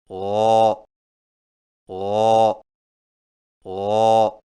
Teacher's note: غین کی ادائیگی میں زبان کی جڑ کو تالو کی طرف بلند کریں